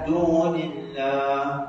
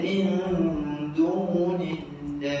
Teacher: Angin ha tu nak mati dan lamakan sedikit